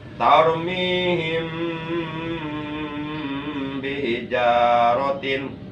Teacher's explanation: Jadi yang ada dalam pasal mim sukun atau mim sakinah, yang kedua adalah ikhfa sapawi. Ikhfa sapawi itu apabila mim sukun bertemu dengan huruf ba, maka mimnya harus digunakan satu alif dua harakat.